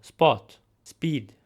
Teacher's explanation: So in these cases the p sound would be less aspirated. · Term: unaspirated P